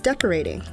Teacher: the Oh doesn't say o or ah instead the sound is shortened and combined with the R to say or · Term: R controlled vowel